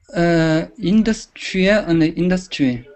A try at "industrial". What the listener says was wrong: Well, you're stressing them rather similarly, in the same way. They should have different stressed syllables. So the first one is which syllable? Which is the stress pattern, and which syllable has the strong stress?